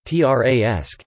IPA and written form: traɪˈæsɪk (Triassic)